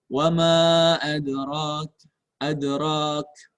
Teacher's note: Kemudian dalnya sukun. Qalqalah. Qalqalahnya qalqalah sugra.